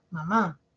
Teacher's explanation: la mayor fuerza de voz eh recae en la última sílaba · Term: acento